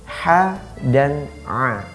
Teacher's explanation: penyebutan huruf ha diucapkan sempurna bila tepat pada makhrajnya, yaitu di tengah tenggorokan